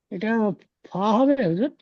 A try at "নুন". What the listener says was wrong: ওটা নুন হবে ভাই। ফা হলে, ফা হলে এখানে এরকম মোটা করে হতো। নু। নুন 3 আলিফ টান, ওয়াও 3 আলিফ টান,